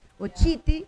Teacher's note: La segunda sílaba es abierta, pero a pesar de ser abierta, está jalando la fuerza.